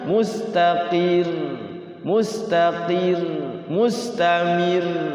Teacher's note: Itu kalau waqaf rnya ditahan karena bertasyid.